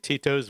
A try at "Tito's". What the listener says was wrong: Why do you say it like Tito's? Tito's. You're hitting the second syllable really hard.